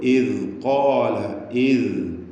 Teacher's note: നാവിൻ്റെ അറ്റം അതിൻ്റെ ലേശം മുകളിൽ നിന്ന് മേലെ മുൻപല്ലിനോട് ചേർത്തിട്ടാണ് ദാൽ ഉച്ചരിക്കുക